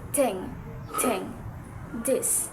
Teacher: So from inter means between and dental means teeth. So the primary constriction happens between our tongue and our upper teeth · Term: interdental